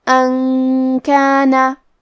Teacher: کلمت کانا کاف حروف الاخفاء میں سے ہے اور اخفاء کا معنی ہے چھپا دینا لہذا ہم نون کو چھپاتے ہوئے اور غنہ کے ساتھ یہ حکم کو ادا کریں گے